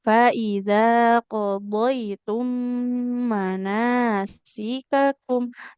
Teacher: mim bertasid harus ditahan dulu ya.